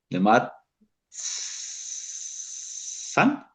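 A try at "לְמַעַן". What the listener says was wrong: No, es que estás confundiendo la ayin con la tzadé.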